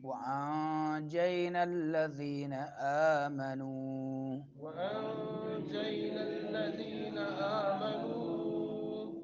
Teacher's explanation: وأنجینا نون ساکن ہے، بعد میں جیم آ رہا ہے تو اخفا ہوگا